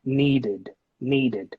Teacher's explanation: The verb need ends in a d sound. So then in this case, we should pronounce it as an id in the end